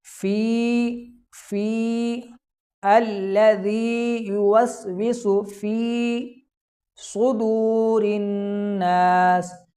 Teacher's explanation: فی کو لمبا کیا جائے گا کیونکہ یہاں پر یا مدہ ہو رہا ہے، اور یا مدہ کے بارے میں آپ مدنی قاعدے کے سبق نمبر 7 کے اندر پڑھ چکے ہیں کہ یا مدہ کو ایک الف یعنی 2 حرکات کے برابر لمبا کر کے پڑھا جاتا ہے۔